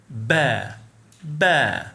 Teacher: ba is considered voiced sound because your vocal cords will vibrate during its pronunciation. Place your hand like this on your throat and feel vibration when you say ba.